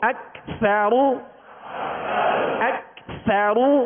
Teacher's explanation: سا کو نرمی کے ساتھ باریک. اکثر، را کو پر پڑھیں گے، را پر پیش ہے.